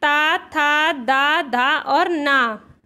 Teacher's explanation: और जो ता वर्ग होता है वो दंत से उच्चारित होता है।